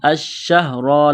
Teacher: را کے اوپر پیش ہے، را کو موٹا کرنا ہے